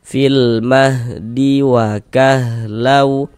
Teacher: Jadi maksudnya izhar tuh dia huruf lamnya itu terbaca gitu. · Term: izhar qamari